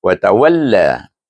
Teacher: La dibaca dengan mad as. Mad asli dua harakat kerana ada alif.